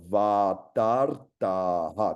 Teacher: A língua dá uma r aí no céu da sua boca